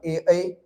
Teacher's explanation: अब देखो कंठ और तालु जकर उच्चारण कंठ आ तालु दुनू के सहयोग से होय छे ओकरा कहै छे कंठ तालव्य वर्ण। जना ए और ऐ के उच्चारण कंठ और तालु दुनू से होय छे